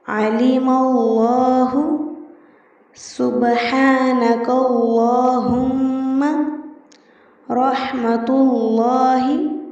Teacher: لفظ اللہ یا اللہم کے لام سے پہلے اگر زبر یا پیش ہو تو لام موٹا پڑھا جائے گا، یعنی اللہ یا اللہم سے قبل والے حرف پر اگر زبر ہو یا پیش ہو تو ایسی صورت میں اس لام کو موٹا پڑھیں گے۔ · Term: لام کی تفخیم